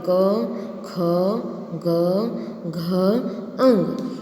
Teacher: જે વર્ણનો ઉચ્ચાર કંઠમાંથી થતો હોય તેને કંઠ્ય કહેવામાં આવે છે